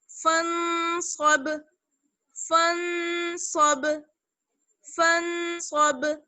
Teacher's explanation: با پر قلقلہ ہوگا، آواز لوٹ کر آئے گی اور یہ ساکن ہے اس وجہ سے